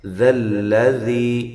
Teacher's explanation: ذال دونوں اپنے مخرج سے ان کو ادا کرنا ہے اور لام کو باریک پڑھنا ہے، لام کو لمبا بھی نہیں کرنا